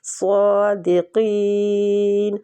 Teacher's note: تم دونوں پہ اخفا ہوگا، اخفا حقیقی، نون کو دونوں جگہ پہ چھپائیں گے۔ صادقین، صاد بھی مستعلیہ حروف ہے، اس کو پورا پڑھنا اور کھینچنا ہے کھڑی زبر کی وجہ سے